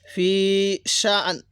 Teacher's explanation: এই যে আমরা এই হামজাটাকে উচ্চারণ করব, নুনটাকে হালকা উচ্চারণ করব।